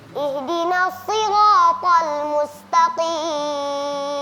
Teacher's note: jadi ketika melafalkan huruf to ada sedikit Mengembung.